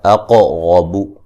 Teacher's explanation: قاف کو موٹا ادا کریں گے، را کو موٹا ادا کریں گے